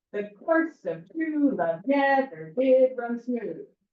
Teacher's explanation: there is one soft beat and one strong beat and it's repeated five times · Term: pentameter